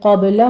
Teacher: قبل میں قاف کو پر پڑھتے ہوئے با پر حمز کریں گے